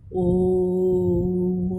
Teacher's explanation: और किसी स्वर को यदि देर तक बोलना हो अथवा किसी व्यक्ति को दूर से बुलाना हो तो वहाँ पर प्लुत स्वर का प्रयोग होता है। जैसे ओम, जब हम ओम का उच्चारण करते हैं तो यहाँ पे बहुत 3 गुना समय लग रहा है, खींच के देर तक बोला जा रहा है, इसलिए यहाँ पे प्लुत स्वर का चिन्ह लग जाता है ओ और म के बीच में।